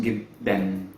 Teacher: we use the vowel for al-Fathah, which is A, which is a very short A, and then we place an N sound after that, which is why it's pronounced jiddan. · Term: open nonation